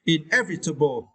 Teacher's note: you need to stress the second syllable